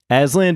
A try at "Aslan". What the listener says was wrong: You're saying a D at the end still. You just said Aslan.